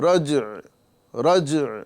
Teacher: تو یہاں پر بڑی احتیاط سے عین کی آواز ظاہر کرنا ہے، رجع رجع ہے نا، جیم میں قلقلہ کرنے کے بعد عین کی آواز کو ظاہر کر کے چھوڑ دینا ہے